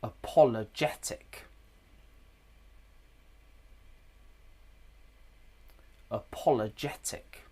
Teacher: Paul does sound stressed, but it's not the most stressed syllable in the word. · Paul has secondary stress. And can you hear the uh at the beginning? It's weak. It's a schwah.